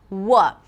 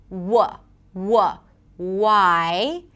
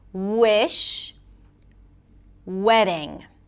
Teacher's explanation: The W is different because the lips come close together. They don't touch and there is no friction. W technically the back of the tongue goes up as well.